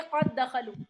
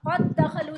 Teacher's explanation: जैसे क़द दखलू, दाल और दाल का इदगाम, यानी कि एक ही हर्फ का, एक ही जैसे हर्फ हो गए, दाल से दाल का इदगाम हो रहा है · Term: इदगाम ताम